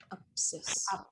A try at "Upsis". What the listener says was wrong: See, the I has to go a longer I. Upsis. Upsis. There's no accent on that I, right?